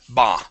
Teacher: instead of bau, it is only an ah sound.